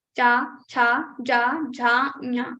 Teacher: To say these words, to say these letters, our tongue goes to our talu. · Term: cha varga